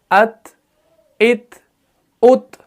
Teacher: ایئر فلو بھی پاس ہو رہا ہے جب ہم تا کو ادا کرتے ہیں